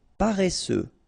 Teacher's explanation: Paresseux. Final X not pronounced.